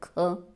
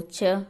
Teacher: जैसे ख बोलेंगे तो थोड़ा जोर पड़ेगा, ख। जिनमें जोर पड़ता है वो महाप्राण होते हैं, जिनमें थोड़ा कम जोर लगाना पड़े बोलने में, जैसे च, तो वो अल्प प्राण होते हैं। यहाँ च तालव्य तो है लेकिन महाप्राण नहीं, अल्प प्राण है, तो इसका सही है ए।